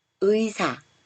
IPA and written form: ɨisa (의사)